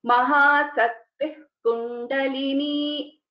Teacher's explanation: So when we are pronouncing this together, Mahasaktih Kundalini, so it is like half visarga. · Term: jihva mooliya